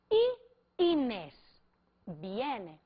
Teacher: a intensidade de Y no início da pergunta vai ser muito maior do que o I de Inês